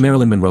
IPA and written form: ˈmærəlɪn mənˈroʊ (Marilyn Monroe)